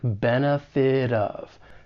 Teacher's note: I am going to pronounce this as a flap T because I'm from the United States and this is very common with the American accent · It's going to sound more like a soft D. And then I can link that flap T with the beginning vowel sound in of. And linking commonly occurs when one word ends in a consonant sound and the next word begins with a vowel sound.